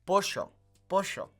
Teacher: in Argentina, that double L sound makes it kind of shh